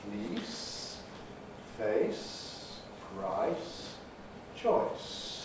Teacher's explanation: vowels that go towards the e area fleece face price choice starting in various different places but all ending up in the general e